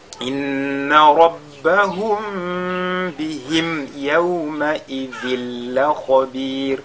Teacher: ici on a tanwin suivi de la lettre lam, on fait une fusion totale